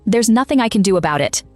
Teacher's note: Beats on nothing, do, and about.